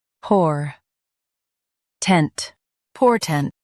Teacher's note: Stress por and keep tent quick.